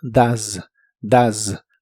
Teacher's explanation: El auxiliar does lo pronuncias como si la O fuese una A. La E no se pronuncia y la S se pronuncia de manera vibrante. Z. Así que suena como does, does.